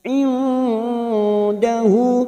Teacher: nun sukun bertemu dal ikhfa hakiki. Kita samarkan bunyi nun sukun 3 harakat.